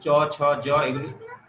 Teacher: চ ছ জ এগুলি উচ্চারণ হয় তালু থেকে, এজন্য এগুলি তালব্য বর্ণ